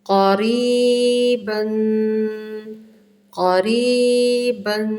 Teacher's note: کاف باریک نہیں کرنی، نمایاں پڑھا جائے گا موٹا